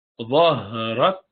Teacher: So the prolongation of ha is slightly longer than that of kaf.